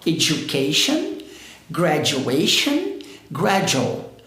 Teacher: o correto aqui, com esse D-U, esse som de U, é o som do J. Então, ó, education, graduation, gradual.